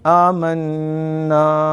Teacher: غنہ ہے, ناک میں آواز اس کی لے جا کر اس کو ادا کریں گے اور آواز اس کی ظاہر ہوگی, آواز ظاہر ہوگی. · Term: ادغام مع الغنہ